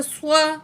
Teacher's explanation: اس صاد کو ہیوی پڑھا جائے گا ہر حال میں، کیونکہ स्वाद को जो है हम पुर पढ़ेंगे, चाहे इसके ऊपर कोई भी अलामत होगी, मोटा करके पढ़ेंगे।